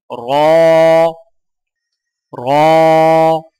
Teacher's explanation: زبان کی نوک کی پشت کو اوپر والے دانتوں کے مسوڑوں سے لگا کر موٹی آواز میں پڑھیں